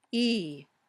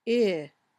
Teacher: the muscles in your tongue are a little tenser or tighter when you say E than when you say I.